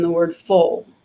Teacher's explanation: the dark l will come after a back vowel and it's in the word full so your tongue is your tongue body is much further down